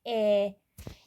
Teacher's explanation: E saitinə dilort sait deyirlər. Dilortası sait. Yəni hər orta tərəfdə deyilir də. Dilin ortasında deyilir sanki.